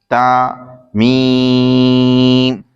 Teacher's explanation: تا زبان کی نوک اور اوپر کے دانتوں کی جڑ سے ادا ہوتا ہے اور میم دونوں ہونٹوں کے خشک حصے سے ادا ہوتا ہے